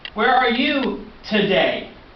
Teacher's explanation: example if we ask a question where are you today so when we say today we go up and we have an upwards inflection